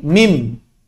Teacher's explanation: Jadi di sini aslinya min ketemu ba'di, maka suara nunnya berubah menjadi suara mim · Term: qalb